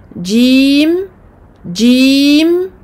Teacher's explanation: milieu de la langue qui touchera le milieu du palais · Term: lettre jim